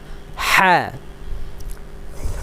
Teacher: পূর্ণ হা প্রথম হা মাঝের হা এটার নাম কি হা অনেকে বলে হা এভাবে বলা যাবে না কিভাবে বলতে হবে হা এভাবে গলার মধ্যে একটু প্রেসার দিয়ে হলকের মধ্যখান থেকে